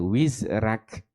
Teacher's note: dia membaca dengan tarkik huruf ra tarkik ni apa maksudnya dia baca dengan dengan nipis tafkhim tebal